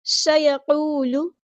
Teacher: سین کو باریک پڑھنا ہے، سٹی والا حروف صفیریہ میں سے ہے تو اس کی سٹی واضح ہونی چاہیے۔